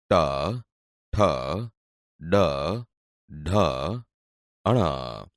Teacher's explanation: ટ ઠ ડ ઢ ણ બોલતી વખતે જીભ ઉપર દાંતના મૂળ ભાગને અડે છે એટલે તે મૂળ ધન્ય વ્યંજન છે હવે આગળ જુઓ ત થ